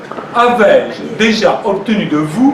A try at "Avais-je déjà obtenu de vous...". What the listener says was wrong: Non, c'est trop vite, tu la foules aux pieds, là. Avais-je déjà obtenu de vous... Et implicitement, tu lui dis, surtout, vous répondez non, hein.